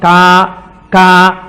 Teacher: కే అన్న దాంట్లో కా కా పలకాలంటే ఎక్కడ పలకాలి? కంఠం దగ్గర పలకాలి.